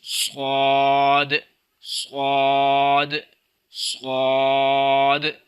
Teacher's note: اس کے اندر سیٹی تو ہے لیکن اس کو سین کی طرح باریک نہیں پڑھنا بلکہ اس کو موٹا کرنا ہے اور سیٹی بھی پیدا کرنی ہے